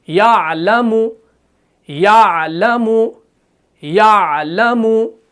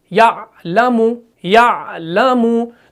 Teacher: हरफ आइन जो है ना, जब भी हम इस हरफ को पढ़ते हैं ना, बिल्कुल आराम से ना आवाज को फौरन बंद करते हैं और ना ही आवाज को जारी रखते हैं, बिल्कुल एतदाल, बिल्कुल दरमियानी हालत से अदा करते हैं।